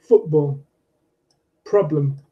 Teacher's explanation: the pattern strong syllable, weak syllable